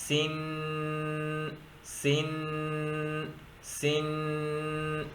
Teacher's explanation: سین 2 زیر سن، سن، سن۔ یہ جو سن کو میں ناک کے اندر گھما رہا ہوں اسی کو کہتے ہیں غنہ اور تنوین